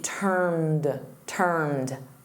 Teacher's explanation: notice that ED for termed here is just a soft D